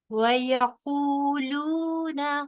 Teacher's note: قاف حروف مستعلیہ میں سے ہے، موٹا پڑا جائے گا